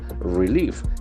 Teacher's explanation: The accent falls to the second syllable.